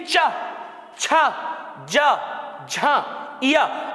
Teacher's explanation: ये कहां से बोले जाते हैं मुख में तालु से बोले जाते